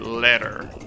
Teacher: Letter, despite having two T's, it kind of sounds like a D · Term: flap T